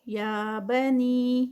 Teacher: یہ مد منفصل ہے، یہ مد ہے، اس کو ہم 4 کاؤنٹس کا اسٹریچ کریں گے